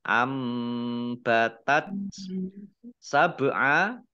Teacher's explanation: bak sukun, bacaan kolkolah, dibaca memantul, ditampakkan pantulannya